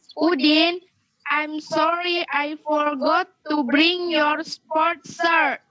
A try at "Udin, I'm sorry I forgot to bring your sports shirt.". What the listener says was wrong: Oke, very good.